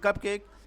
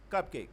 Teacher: Spondy. Equal stress for both syllable, as in cupcake. If we read cupcake, it has two syllable cup and cake.